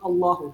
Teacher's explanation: اللہ عز و جل کے لام کو جو ہے 1 انگلی کی مقدار کے برابر کھینچ کے پڑھیں گے